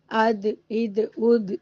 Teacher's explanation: दाल पर हिलाना ना भूलें यानी इको साउंड जरूर देना है अद इद उद इस तरह से तो हम सौद को खींचते हुए जब दाल पर पहुंचेंगे तो डबल साउंड करेंगे सौद सौद सौद इस तरह से।